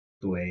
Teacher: আর third টোনটা কি falling and rising